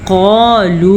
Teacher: कौफ मोटा है और वाव मद्दा भी है।